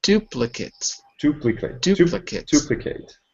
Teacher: So the last syllable is unstressed when it's a noun.